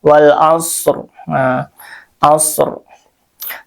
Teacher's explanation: Shadnya sukun ya. Dan dia mempunyai sifat saofir ee mempunyai desis. Desisan. Hmm. Kita ketika mengucapkannya seperti berdesis ya.